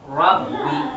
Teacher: jangan sampai terlalu nampak R yang diulang. Rabbi, Rob nggak boleh.